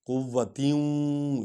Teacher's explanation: قوتیوں، یہاں وا میں ملائیں گے کیونکہ وا پر شد ہے، تے اور وا کو اکٹھے پڑھیں گے، نون غنہ کریں گے، تیوں ولا ناصر، فواد پڑھیں گے ناصر، سین نہیں پڑھیں گے، سین سیٹی کی آواز نکلتی ہے، اور یہ سواد ہم فواد پڑھیں گے، ناصر۔